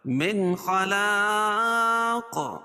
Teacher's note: یہاں اظہار حلقی، کیونکہ نون ساکن کے بعد حروف حلقی کے 6 حرفوں میں سے خا ہے اور اس کو پور بھی پڑھیں گے.